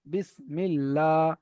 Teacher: আল্লাহু শব্দের আগে জের এসেছে তাই আল্লাহু শব্দের লামকে বারিক করে পড়তে হবে